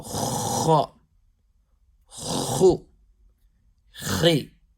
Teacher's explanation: So the back portion of your tongue, raising it. So raising the back part of the tongue towards the palate